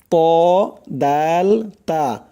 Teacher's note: জিহ্বার আগা সামনের উপরের 2 দাঁতের গোড়ার সঙ্গে লাগাইয়া উচ্চারণ হয় 3টি অক্ষর